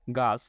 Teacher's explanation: লাল বর্ণ ছ এখানে অঘোষ মহাপ্রাণ